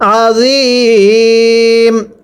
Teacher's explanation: জয়া জের জি, মিম দুই পেশ মুন, আজিমুন, ওয়াকফ করলে আজিম, ওয়াকফের সময় 3 আলিফ টেনে পড়তে হবে । মদের হরফ ইয়া এর পরের হরফে ওয়াকফ হলে 3 আলিফ